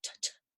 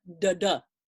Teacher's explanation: I take my t that is devoiced, has no vibration to it, and I use the exact same movement of the tongue, but I put some vibration in it and I get a da da.